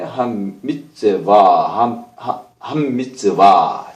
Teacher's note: 이건 다게시 포르테입니다. 더블링이죠. 맴이 2개 있는 거예요. 맴이 2개 있지만, 경제적으로 쓰기 위해서 2개의 맴을 한꺼번에 쓰지 않고, 같이 쓰지 않고, 그냥 맴 하나만 쓰고 안에 더블링을, 점을 찍어줘서, 다게시를 찍어줘서, 맴이 그 안에 또 하나 있다라는 것을 알려주는 것입니다.